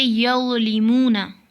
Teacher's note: ज़ा की आवाज़ मोटी और नरम होती है, जैसे यज़लिमूना